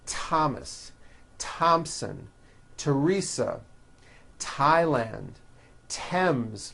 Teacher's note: they are pronounced as if they were spelled with a normal T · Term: TH exceptions